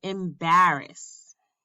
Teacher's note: a three syllable foot where the stress is on the middle syllable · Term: Amphibrach